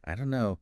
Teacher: the don't and no just merge. >> So becoming aware of this linking is really important for understanding and for sounding more natural yourself.